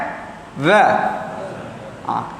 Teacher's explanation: Maka huruf ni tidak memerlukan angin. Sifat dia jahar.